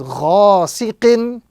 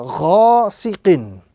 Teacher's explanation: the proper pronunciation is ghasiqin with prolongation on the first letter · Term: alif madda